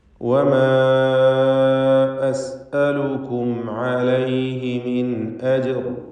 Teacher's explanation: വമാ എന്നതിലെ ദീർഘം മദ് മുൻഫസിൽ ജായിസാണ്. 4-5 ഹറക്കത്തിൻ്റെ അളവിൽ അലിഫിനെ ദീർഘിപ്പിക്കണം. അലിഫിന് ശേഷം അടുത്ത പദത്തിൻ്റെ ആരംഭത്തിൽ ഹംസ വന്നതാണ് ഈ ദീർഘമുണ്ടാകാൻ കാരണം.